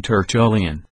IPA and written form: tərˈtʌliən (Tertullian)